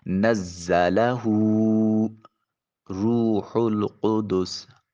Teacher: را کے اوپر پیش ہے، موٹا اور پر کر کے ادا کریں گے